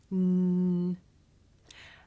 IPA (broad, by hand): n